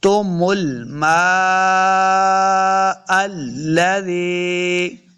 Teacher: دیکھیں مد لام میم کے اوپر ہے تو ہم نے میم کو لمبا کر کے پڑھنا ہے